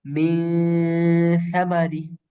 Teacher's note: মিম নুন জের মূলত সব মিন, কিন্তু আমরা মিন। মিন কিন্তু পুরোপুরি স্পষ্ট ভাবে বলি নাই, আমরা বলছি মি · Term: ইকফা